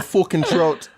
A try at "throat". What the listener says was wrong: It sounds like you're saying fucking trout, like a fish.